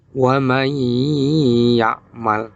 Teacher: arti idgham adalah memasukkan sedangkan wuna artinya mendengung Jadi maksudnya adalah cara membaca nun sukun atau tanwin dengan mendengung dan masuk kepada huruf sebelumnya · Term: Idgham Bighunnah